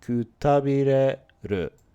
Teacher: He kind of makes it a little bit rounded off. When she said it really slow, it was the tabire is high and ku and ru are both low, but he kind of went kutabireru versus she went kutabireru. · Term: pitch accent